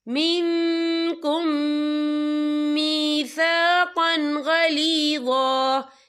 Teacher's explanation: یہاں میم ساکن ہے، میم ساکن کے بعد جو ہے میم مشدد والا حروف آ رہا ہے، تو یہاں پر ادغام شفوی ہوگا، ہم پچھلے میم کو اگلے میم میں مدغم کریں گے، اور ہم یہاں غنّہ بھی کریں گے۔